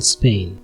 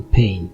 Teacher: Spanish doesn't have aspirated consonants, so the sound P will always be pronounced as in Spain and not as in pain.